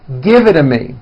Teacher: the only big change comes from the t's being pronounced as D's and this happens because the t's fall between two vowel sounds